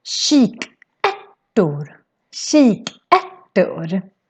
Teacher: the R in Swedish becomes a little bit soft if we have a T afterwards. So that's why it sounds not like a strong rolling R, it's more like a T sound. · So it's sh sound in the beginning and then a k sound in the end.